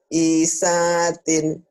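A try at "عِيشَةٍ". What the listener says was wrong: Isyatin, panjang ini ya.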